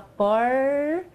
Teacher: O movimento da língua é quase que enrolado. Quando se fala por, veja, a língua se enrola um pouquinho. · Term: R caipira